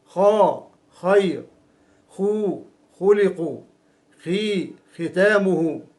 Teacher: فبين جذر اللسان والحنك اللحمي من هذا المكان يخرج حرف الخاء، ولكن أعلى بقليل من حرف الغين، مع ملاحظة أن المخرج لا ينقفل أي مفتوح · ويكون الوتران الصوتيان متباعدين، ويجري النفس خلال فتحة المزمار دون عائق. ونطق حرف الخاء يحتاج إلى كمية من الهواء أكبر من الكمية التي يحتاج إليها نطق حرف الغين، لأن الخاء حرف مهموس ضعيف. لذلك الخاء عند النطق بها تحتاج إلى قوة الاعتماد على المخرج، وإذا أفرطنا في قوة الاعتماد على المخرج عند النطق بالخاء حينئذ سيصاحب الخاء صوت الشخير.